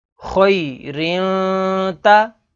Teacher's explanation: اب یہاں پر تنوین کے بعد اگلا حرف تا ہے، تا حروف اخفا میں سے ہے، تو یہاں پر اخفا یعنی غنہ کر کے پڑھیں گے